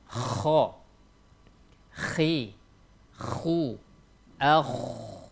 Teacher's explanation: huruf tebal, tempat keluarnya itu adalah di tenggorokan kita yang paling atas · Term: huruf kha